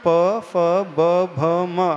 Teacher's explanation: फिर प वर्ग का उच्चारण करते प फ ब भ म, हमारे दोनों होंठ टच होते हैं